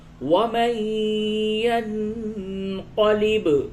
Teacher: نون ساکن کے بعد یا ہے، ادغام مع الغنہ ہوگا